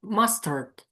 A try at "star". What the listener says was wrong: Okay, if it were mustard, it would be stir, stir, and I say star. So I'm going to tell you you're in the right column, but we need a lower jaw.